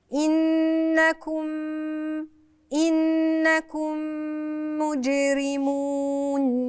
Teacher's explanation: الميم هتبقى ميم كده مشدده ونغنى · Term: ادغام بغنه